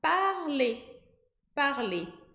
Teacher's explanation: Esse E com R vai formar o som de E. A gente não pronuncia o R, mas o fato do R estar ali faz com que o E, que vem antes, tenha esse som de E.